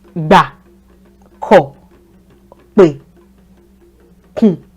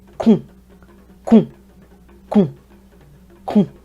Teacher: The essence is your voice drops when you say syllables that have the do tone.